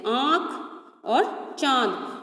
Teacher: फिर है अनुनासिक, यानी कि चंद्रबिंदु। इसका उच्चारण नाक और गले दोनों से होता है